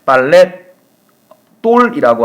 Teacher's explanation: 유성은 모음으로 끝났죠. 모음으로 끝나고 뒤에 오는 예사소리가 된소리로 최종적으로 이렇게 빨랫돌이라고 하는 된소리로 발음이 된 거죠.